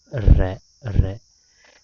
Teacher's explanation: र प्रकंपित ध्वनि है, क्योंकि इसके उच्चारण के समय जीभ में कंपन होता है